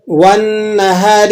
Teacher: والنہار، یہ پھر نون حروف شمسیہ کا آ گیا، یہاں پر آپ لام تعریف کا نہیں پڑھیں گے۔ والنہار، واو کو نون سے ملا کر ذرا جماؤ اور سختی کے ساتھ ادا کریں گے کیونکہ نون مشدد بھی ہے